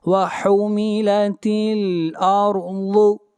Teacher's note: را کو موٹا پڑھا جائے گا اور ضاد کو موٹا پڑھیں گے، ضاد حروف مستعلیہ میں سے ہے۔